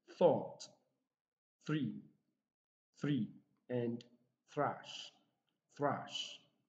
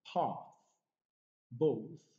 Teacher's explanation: the tongue comes out and that is why this sound is called dental fricative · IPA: ɵ